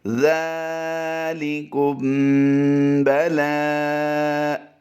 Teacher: میم ساکن کے بعد اگر حرف با آ جائے تو میم ساکن میں اخفاء شفوی ہوگا، اس کو بھی غنہ کر کے پڑھیں گے